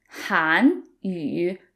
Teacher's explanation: Han is a rising tone. We call it the second tone. It sounds like you're asking a question.